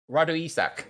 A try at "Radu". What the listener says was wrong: But you need to do the rolling of the R, the Radu.